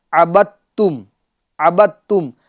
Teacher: یہاں پر دال کو چھوڑ دیا گیا ہے اور با کو تا کے ساتھ ملا دیا ہے